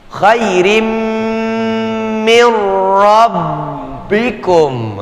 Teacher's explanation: Nggak pakai gunnah karena dia idgham bila gunnah. Huruf nun sukun bertemu dengan huruf ra.